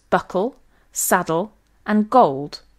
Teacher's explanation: The ul sound in this position is a velarized alveolar lateral approximant. The back of the tongue is slightly raised, and in some dialects can even morph into an aw sound. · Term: dark L